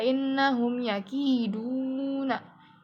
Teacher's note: yakiduna itu ada izhar syafawi karena mim sukunnya itu ketemu sama huruf ya di sini